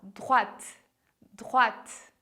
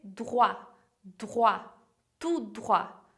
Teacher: tem uma nuance, um T lá que é quase assopradinho